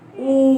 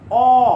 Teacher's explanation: এই ধ্বনিগুলো উচ্চারণ করতে গেলে আমাদের মুখটা গোলাকৃতি হচ্ছে, গোলাকৃতি।